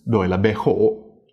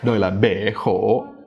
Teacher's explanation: if you have two high words in a row, you kind of de-stress the first one, and then you add more stress to the second one. So for example, in the sentence, tôi là bé khổ, you have to kind of cut the first one low, and then the second one starts high, like in phải.